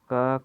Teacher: अगला क्वेश्चन है हम लोगों का, तो अल्प प्राण में मुख की वायु, मुख से वायु की कम मात्रा निकलती है अल्प प्राण में